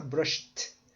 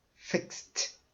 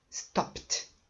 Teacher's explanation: palavra ou ainda ele terminar em k ou terminar em p a pronunciation vai mudar você vai pronunciar como se fosse um t